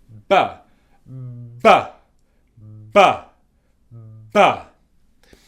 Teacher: So with this sound, first of all, my lips are together. It's called a bilabial sound. So both my lips, bi, 1, 2, 2 in English is bi.